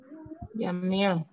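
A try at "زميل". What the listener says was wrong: Bukan jamil, zamil.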